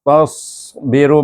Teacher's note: Kemudian kita sambung kalimah berikutnya, wa in tasbiru sad itu tebal, tasbiru jangan jadi sin, angkat pangkal lidah menyebut huruf sad. Dia makhraj sama ya.